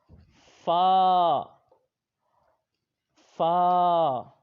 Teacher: اگلا حرف فا، فا، یہ حروف شفویہ ہے، یہ اوپر کے دانتوں کے کنارے اور نچلے ہونٹ کے تر حصہ سے پڑھا جاتا ہے